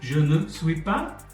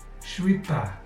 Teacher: the 4-syllable textbook phrase je ne suis pas becomes a rapid 2-syllable sound that sounds like suis pas · you'll notice that the actors don't pronounce the ne. They completely drop it. And besides that, they blend the je and suis together.